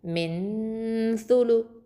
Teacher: இஹ்ஃபா பண்ணி ஓதணும், மறைச்சு குன்னா செஞ்சு ஓதணும்.